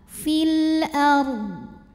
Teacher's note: qamari fil ARD huruf ro sukun dinama dibaca secara tafkhim ya karena ra sukunnya didahului baris fathah maka dibacanya tebal fil ARD dan ddnya harus tetap terbaca tapi tidak boleh memantul